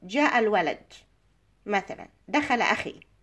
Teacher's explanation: This is a statement. The end of the statement is falling, has a falling intonation